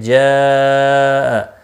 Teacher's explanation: جاء مد متصل ہے، 4 الف کے برابر کھینچ کر پڑھیں گے۔